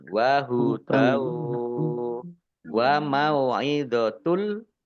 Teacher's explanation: Wahudau fathah tanwin bertemu dengan huruf wawu, bacaan idgham bi gunnah masuk dengan mendengung, yaitu masuk ke huruf wawu, mendengung wawu, ditandai wawunya ada tasdidnya.